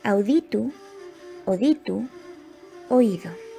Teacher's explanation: El diptongo au se simplifica en o